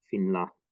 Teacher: note that the gemination is reduced to a single consonant